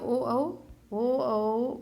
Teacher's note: ओ तथा औ का उच्चारण स्थान कंठोस्थ है। इस और कंठ और ओष्ठ के द्वारा बोले जाने करने से क्या कहते हैं कंठोस्थ्य।